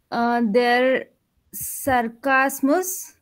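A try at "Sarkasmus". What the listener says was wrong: Sarcasmus, not ser. Sarcasm. Open your mouth.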